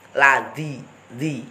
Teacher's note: Di belakang gigi seri atas mengenai gusi kalau zal. Ladzi, di. Jadi nggak kelihatan lidahnya.